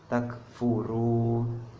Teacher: Nah, mad tabi'i itu ketika fathah diikuti oleh alif, kemudian kasroh diikuti oleh ya sukun, dan domah diikuti oleh wawu sukun. Nah, dibacanya panjang 2 harokat.